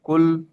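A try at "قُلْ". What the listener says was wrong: কাফ নাই ভাই, কফ।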